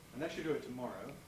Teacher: where the S and the y really come out as a single sh